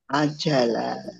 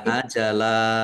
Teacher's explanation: Dibaca ajala. Panjangnya dua harakat saja ya. Jangan terlalu panjang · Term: mad iwad